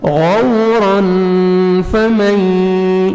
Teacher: فا ہے حروف اخفا میں سے نوز میں ساؤنڈ لے کے جائیں گے